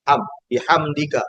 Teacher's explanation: ketika mimnya dibaca jelas tanpa boleh ditahan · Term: izhar syafawi